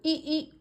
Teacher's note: इस तरह से लग रहा है जैसे तालू से आवाज आ रही है